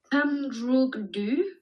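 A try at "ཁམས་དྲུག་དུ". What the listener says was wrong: Kam truk du. Kam truk Ah, ça c'est important hein, pour la prononciation. Attention, nous sommes des francophones. Donc, kam, expirez. Kam. Le K a disparu là. Attends, c'est pas am. Vas-y, le K, il est dedans quand même. Le K. Kam. Et puis, 6, c'est tuk.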